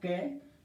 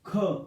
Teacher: जब आप बोलेंगे ना क, तो लास्ट में आप जाकर रुकते हैं ए पर, लेकिन आप जब बोलेंगे ख तो आप जाकर रुकते हैं है पर